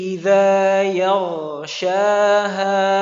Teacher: kalau ghain ini makhrajnya di adnal halq, tenggorokan yang paling atas atau paling dekat. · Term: Huruf gha